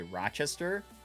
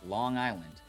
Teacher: replacing vowels with that like really nasally A sound is like the biggest thing we do in Rochester